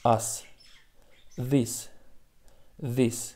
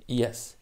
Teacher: дар калимаҳои зерин қоидаи мазкур риоя нашуда ҳамсадои s дар охири калима пас аз садонокҳо на z балки се хонда мешавад